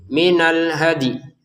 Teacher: dalnya dipantulin dulu baru ya-nya ya kita sebutin. Minal hadi.